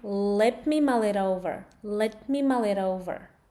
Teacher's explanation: This t actually becomes m.